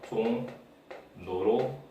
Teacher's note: 유음과 비음이 같은 자리가 아니에요. 그럼 유음이 그대로 비음으로 올라갑니다.